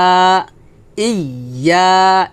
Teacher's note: জিহ্বার মধ্যখান উপরের তালুর সঙ্গে লাগিয়ে ইয়া উচ্চারণটা হবে।